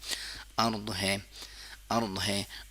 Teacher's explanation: ضاد زبان کے سائیڈ والے حصے کو دانت سائیڈ والے دانتوں کے ساتھ ٹچ کرتے ہیں، چاہے وہ سائیڈ رائٹ سائیڈ ہو یا لیفٹ سائیڈ ہو، لیکن ضاد کی مخرج یہ ہے.